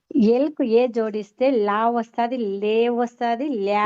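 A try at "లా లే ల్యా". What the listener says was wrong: ఇది దీర్ఘం చూడమ్మా, దీర్ఘాన్ని దీర్ఘంగానే పలకాలి. లే ల్యా అలా నేర్చుకోవాలి. లే వేరు, లే వేరు.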